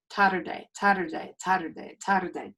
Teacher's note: think of it as a tap of the tongue like the d sound in butter or tatter